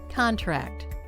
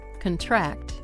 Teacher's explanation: The stress goes on the first syllable in the noun and on the second syllable if it's a verb.